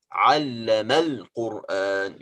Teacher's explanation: we don't pronounce hamzat al-wasl at all. We just skip it.